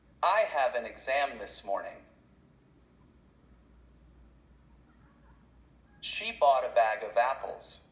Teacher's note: notice how these words link together kind of sounds like one word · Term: consonant and vowel